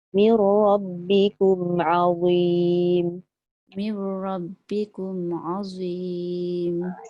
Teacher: أعوذ بالله من الشيطان الرجيم بسم الله الرحمن الرحيم وإذ نجيناكم من آل فرعون يسومونكم سوء العذاب يذبحون أبناءكم ويستحيون نساءكم وفي ذلكم بلاء من ربكم عظيم. Azim, hujung lidah mesti keluarkan macam zal, tapi dia tebal.